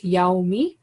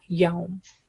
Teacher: The actual word is yaumi, but when we are making stop, that last kasra part change into sukoon and it will become yaum.